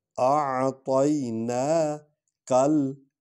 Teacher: کاف کو لام میں ڈالنا ہے، ملانا ہے